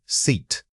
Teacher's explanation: stretch the sound out fully. Imagine you are holding a long sustained e sound. This requires pulling your corners of the lips slightly back and stretching them horizontally.